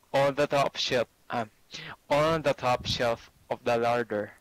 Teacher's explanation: It's just how you say the top shelf. It's like one word.